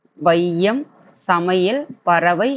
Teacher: இரண்டு மாத்திரை அளவிலிருந்து குறைந்து ஒலிக்கிறது. இவ்வாறு குறைந்து ஒலிக்கும் ஐகாரம் ஐகார குறுக்கம் எனப்படும்.